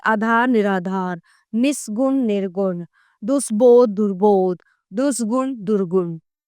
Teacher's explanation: स के स्थान पर र ध्वनित होता है